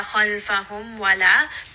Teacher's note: So waw and fa, both of these do have idhar. They do not have idgham. They do not have ikhfa.